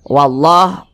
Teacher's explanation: Allahnya dibaca tebal, dibaca tabkhim karena dia ada tanda baca fathah